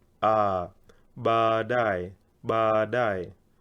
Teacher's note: Anytime in Kiswahili you have double vowels, like these 2 A's, you prolong them.